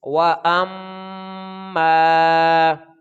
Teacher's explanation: اور اسی طرح یہ دوبارہ پھر مشدد حرف آ گیا تو حمزہ کو میم کے ساتھ ملائیں گے تو غنہ کریں گے. اور اب چونکہ کوئی آگے ملانے والا حرف نہیں ہے تو لہٰذا اس کو ہم ایک الف کے برابر ادا کریں گے، کیونکہ یہ الف مدہ کے اصول پورے ہو رہے ہیں یہاں پر.